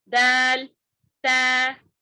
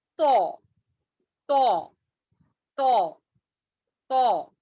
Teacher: یہ بھی جو ہے اس کا مخرج بھی سیم ہے لیکن دال اور تا جو ہے باریک پڑھے جانے والے ہیں، لیکن تو جو ہے موٹا پڑھے جانے والا حروف ہے